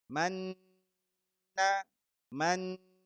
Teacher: langsung dimasukkan huruf setelahnya dengan catatan didengungkan yang lama. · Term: idgham bi gunnah